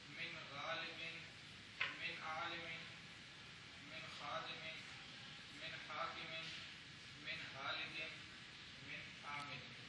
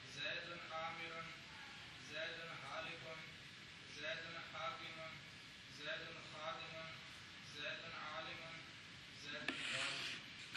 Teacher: تو حروف حلقی سے پہلے نون ساکن نون تنوین آ جائیں تو نون ساکن اور نون تنوین کو ظاہر کر کے پڑھنا ہے. اخفاء نہیں کرنا یعنی ناک سے آواز نہ نکلے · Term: اظہار